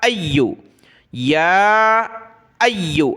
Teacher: حمزہ کو یا کے ساتھ ملایا, یا کو سخت کیا تشدید کی وجہ سے